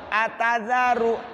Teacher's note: za, ujung lidah di gigi